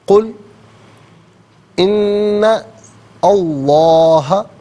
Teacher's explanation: ہمزن یہاں پر ان میں آپ دیکھیں نون پر زبر ہے، اور اسے اسم اللہ کی حرف لام کے ساتھ ملائیں گے، درمیان میں سے الف یعنی حمزہ کو حذف کیا جائے گا. اسم اللہ کی حرف لام سے پہلے والے حرف نون پر زبر ہے، تو اسم اللہ کی حرف لام کو یہاں پر کر کے پڑھیں گے